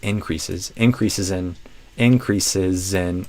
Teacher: this is a z but it might not always sound like a z unless you have a vowel after it to connect it. So, that's a good test to check if a final letter S is a secretly a Z sound or an S sound is say a word after it that starts with a vowel and listen to that connection.